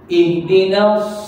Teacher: kan huruf sad ni lidah naik atas